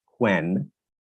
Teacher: if I were to use a Scottish accent when I say the word when I might say it as quen